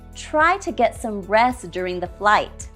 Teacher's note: We drop the T in rest.